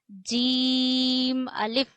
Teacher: जीम हमारे जबान के दरमियान और तालू के दरमियान से अदा होता है।